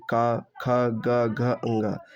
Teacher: जिन वर्णों का उच्चारण करते समय जीभ का पिछला भाग हिस्सा हमारे कंठ को छूता है उन्हें हम कंठ व्यंजन कहते हैं।